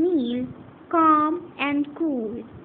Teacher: The co sound in kneel, calm and cool, differs. In kneel, it is at the front in the mouth. In calm, it is a little in the center, and cool further back in the mouth. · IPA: /k/